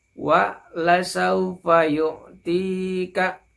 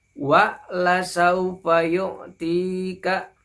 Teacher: Jadi huruf lam dengan huruf sin ini bersambung ya membacanya, tidak terjeda ya. Jadi membacanya wa la saufa yu'tika.